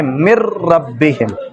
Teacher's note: اب نون لکھنے میں تو ہوگی نا، اس کو پڑھیں گے من ربہم، غنہ نہیں کریں گے، غنہ کے بغیر ادغام کریں گے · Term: ادغام بلا غنہ